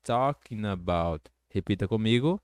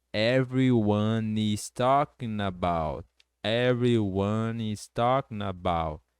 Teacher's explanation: Dá também para você juntar o N com about, ficando talking about